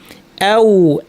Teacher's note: দুই ঠোঁট থেকে ওয়াও, দুই ঠোঁট গোল করে সুন্দরভাবে সাবলীল।